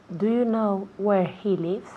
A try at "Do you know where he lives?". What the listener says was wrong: Muy bien, very good.